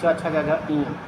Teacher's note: तो च छ ज ञ है ये जो है आपका तालव्य हो जाएगा